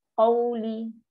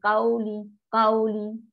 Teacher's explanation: Dia tak naik pangkal lidah. Dia rasa macam susah, tak tahu macam mana nak naik.